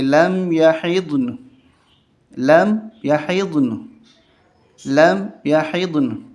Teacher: یہاں وقف اس طرح ہوگا کہ نون کی زبر ظاہر نہیں ہوگی۔